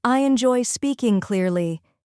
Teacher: Notice the stronger beats on joy and speak.